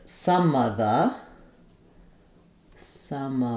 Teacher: The phrase some of the is going to go by quickly. It's going to be linked and reduced as much as possible.